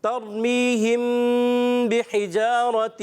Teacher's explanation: ترمیہم بحجارۃ، را ساکن سے پہلے زبر آنے کی وجہ سے را کو پر کریں گے. می یا مدہ ہونے کی وجہ سے ایک الف کھینچیں گے